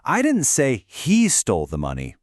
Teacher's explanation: what if we stress he?